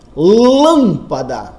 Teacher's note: Lâmpada, cuja sílaba tônica é o lã.